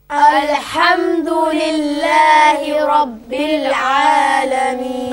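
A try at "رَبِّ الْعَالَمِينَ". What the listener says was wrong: Okay, don't bounce the lam, don't bounce the lam, okay? Now, don't bounce the lam in Rabbil Alameen as well. So, Rabbil Alameen, Rabbil Alameen.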